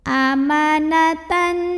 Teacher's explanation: idgham bighunnah karena ada tanwin fathah yang bertemu dengan Nun maka cara baca tanwin fathahnya ini dileburkan atau dimasukkan ke Nun kedua ya ke Nun tasydid disertai dengungan jadi bunyinya n dan ditahan bunyi n nya